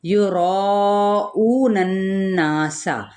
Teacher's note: را ہم نے پر پڑھنا ہے اور الف مدہ ہے